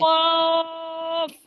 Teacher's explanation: জিহ্বার গোড়া তার বরাবর উপরে তালুর সঙ্গে লাগাইয়া দুই নোক্তা ওয়ালা কফ